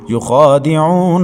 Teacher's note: عین کے بعد واو ساکن ہے، اس سے پہلے عین کے اوپر پیش تو واو مدہ ہے، ایک الف تک کھینچیں گے۔ نون حروف طرفیہ میں سے ہے، طرف لسان سے ادا کریں گے